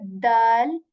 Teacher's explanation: you put the tip of your tongue right at the back of your upper teeth and say dal